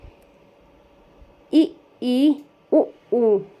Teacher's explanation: इनको उच्चारण करते वक्त मुख द्वार लगभग बंद ही रहता है। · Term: संवृत स्वर